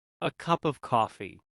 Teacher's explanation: The of can become very small almost like a cup a coffee.